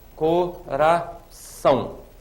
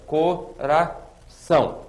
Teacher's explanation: A última sílaba é mais forte do que as outras. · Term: oxítona